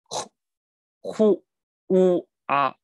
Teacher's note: 字头是呵啊，这种出气先出气的音，大家要注意，先要出气再出声。